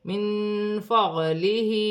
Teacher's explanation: نون ساکن کے بعد فا آ رہی ہے، نون ساکن میں اخفا ہوگا، فا حرف اخفا میں سے ہے